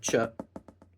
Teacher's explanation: made up of the shepherd's hook, the sh, plus a t at the front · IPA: [tʃ]